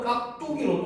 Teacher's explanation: 앞 음절의 끝소리가 기역으로 인해서 된 소리로 나는 거죠